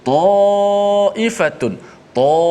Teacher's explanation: Maka alif di situ dibaca dengan tafkhim, dibaca dengan tebal oleh kerana huruf sebelumnya tebal.